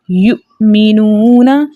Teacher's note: حمزہ ساکن کی آواز اس کے مخرج میں جھٹکے کے ساتھ رکتی ہے